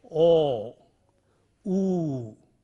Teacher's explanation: in the production of these vowels the lips are rounded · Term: rounded vowels